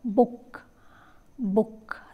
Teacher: the back of the tongue is raised to a position just above half close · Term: back rounded vowel